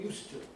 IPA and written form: ˈjuːstu (used to)